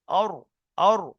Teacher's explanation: আর, আর ধরে নিতে হবে জিভটা, জিভের আগার উল্টো পিঠ উপরের তালুতে লেগে উচ্চারণ হয় র।